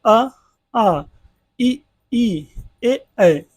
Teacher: क्या होता है मुख द्वार जो है आधा खुलता है अर्थात हमारा जो ओट होता है ये गोलाकार नहीं होता है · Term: अर्ध वर्तुल